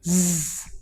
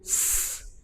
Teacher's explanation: If you place your palms over your ears and say these two sounds, S and Z, alternately, you can feel the difference. You will experience a buzzing sound while saying the sound Z, which is not present when you say the sound S. So this goes to show that the sound represented by the English letter S is voiceless, while the sound Z and B are voiced.